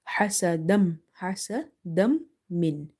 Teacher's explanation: So we are doing idgham, meaning we have to merge the sound as well as we have to do nasalization in the sound.